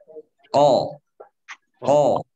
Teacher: terangkat pangkal lidah sehingga memberikan konsekuensi penebalan pada suara huruf qaf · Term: isti'la